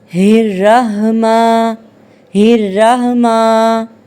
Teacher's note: را کو موٹا پڑھنے کی بجائے باریک پڑھتی ہے اور ہا کی بجائے گول ہا پڑھتی ہے